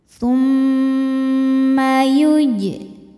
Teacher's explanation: mimnya dihukumi ghunah musyaddadah karena mim bertasydid. Cara bacanya berdengung. Tahan dengungannya kurang lebih dua harakat. Tumma yuj. Jim sukunnya dihukumi qalqalah sughro. · Jim sukunnya dihukumi qalqalah sughra sebab jim sukun asli dan ada di tengah bacaan. Cara membacanya dipantulkan dengan pantulan yang kecil. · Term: gunnah musyaddadah